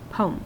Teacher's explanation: It's almost like we don't hear the EM at the end.